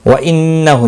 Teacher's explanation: نون مشدد پر غنہ ہوا، ہا کے اوپر کھڑی زبر ہے الٹا پیش ہے ایک الف کے برابر کھینچ کر پڑھیں گے